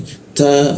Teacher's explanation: huruf ta ya, udaranya sedikit bocor ya. Ta ada sedikit hembusan seperti itu.